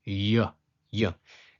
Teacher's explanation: its pronunciation is a palatal approximant, sounding like a y